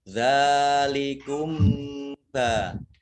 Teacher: Kemudian fa kasroh ya sukun mat tabi'i, zal fathah alif, zal fathah berdiri mat tabi'i. Kemudian mim sukun bertemu dengan huruf ba, ini bacaan ikhfa safawi. Dibaca samar-samar.